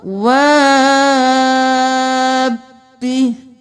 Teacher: مدغم کر دینا ہے دونوں با کو